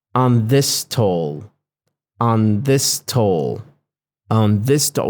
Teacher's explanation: And this is very typical of the spoken English where two similar consonants meeting at the end of a word and the beginning of a new word, so they get smushed together. They get fused together to reduce the amount of stops in the middle of the speech.